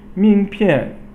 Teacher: Ming pian, ming, second tone, and then pian, fourth tone, it means your business card.